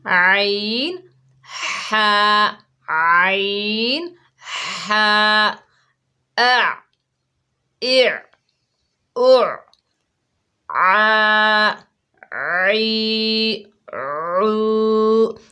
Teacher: مخرج نمبر 3 یعنی وسط حلق، حلق کا درمیانی حصہ، ٹھیک ہے۔ حلق کے درمیانی حصے سے 2 حروف ادا ہوتے ہیں